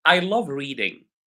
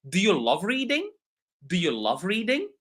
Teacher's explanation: my voice goes down for normal sentences and my voice goes up for uh questions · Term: intonation